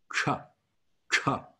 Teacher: And a C is always a CH sound, but it's not a ch sound right between behind your teeth, but rather a ch, ch sound. So you're gonna curl your tongue up into the center of the roof of your mouth to make that CH sound.